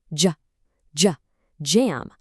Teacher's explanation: It's a textured, almost buzzing noise that combines a duh and a soft juh.